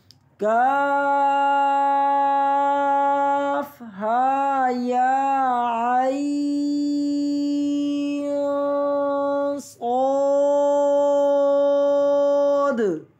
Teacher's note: زبان تالو سے تھوڑی سی نیچی ہوگی. صاد کے ساتھ آخر میں الف موٹا ہو